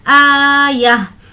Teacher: आयह, और यहाँ पर ये गोलता है और हमें यहाँ पर वक्फ करना है, तो ये समझेंगे कि गोलता पर वक्फ करना हो तो वो हाय साकिना बन जाती है